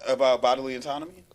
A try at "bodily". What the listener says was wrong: bodily, not bottom. Bodily.